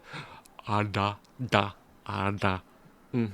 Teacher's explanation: the tip of the tongue sort of going back over itself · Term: retroflexes